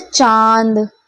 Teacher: अनुनासिक के उच्चारण में वायु नाक और मुख दोनों से निकलती है ठीक है नाक से भी निकलेगी और क्या है मुख से